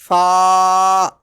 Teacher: It is pronounced from the edges of the two upper front teeth touching the inside part of the lower lip. Upper front teeth touching the lower lip lightly.